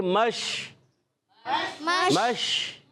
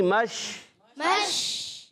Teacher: شین میں تفشی ہوتی ہے، ایک صفت پائی جاتی ہے جس کا نام ہے تفشی، یعنی منہ میں آواز کا پھیل جانا